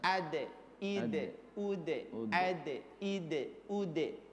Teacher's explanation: Dal itu bukan menyentuh langit-langit, tapi di antara gusi dan gigi. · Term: huruf dal